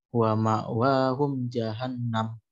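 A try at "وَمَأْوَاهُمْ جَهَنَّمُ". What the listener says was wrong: Nunnya kurang tasdid.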